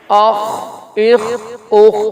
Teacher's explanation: یہاں خیال کرنا ہے خا حروف مستعلیہ میں سے، اس کو موٹا بھی کریں گے ہم